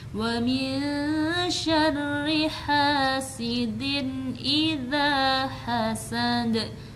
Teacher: tanwinnya dibaca jelas sekali tanpa harus diguna, didengungkan atau disamarkan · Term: izhar